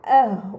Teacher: Pada kata ahwa'ahum terdapat mat bertemu dengan huruf hamzah dalam satu kata, ini dinamakan mad mutasil, maka harus dibaca panjang selama 4 atau 5 harokat